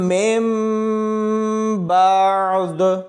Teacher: ہم نے من نہیں پڑھنا بلکہ میم کو میم کے ساتھ ملاتے ہوئے مم پڑھا جائے گا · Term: چھوٹی میم